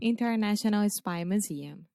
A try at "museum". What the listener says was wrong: Yeah, you don't have to put a stress on the mu. Imagine you're saying new. Mew.